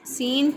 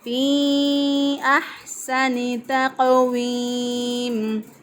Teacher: تقویم میں قاف جو ہے اس پہ قلقلہ ہوگا اور قاف موٹا بھی پڑھا جائے گا